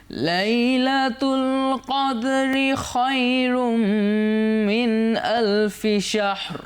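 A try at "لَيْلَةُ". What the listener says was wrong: আর লাই নাকে যাবে না, লাই লাই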